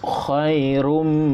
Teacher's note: Idgham ma'al ghunna. Jadi dengungkan dia, mulut tutup.